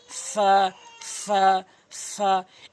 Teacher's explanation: ফা হরফটি উপরের দাঁতগুলোর নিচের ঠোঁটের পেটে লাগাবেন, যেমন ফা, এবং এক আলিফ টেনে পড়বেন, ফা, ফা, ফা, ফা।